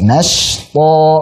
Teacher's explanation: Dan saat baca nashta, shinnya tipiskan dulu.